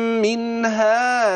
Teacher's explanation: النون الساكنة أتى بعدها هاء إظهار حلقي